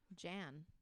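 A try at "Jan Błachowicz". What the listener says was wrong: It's not, his name's not Jan. It's Han. Han Blachowicz.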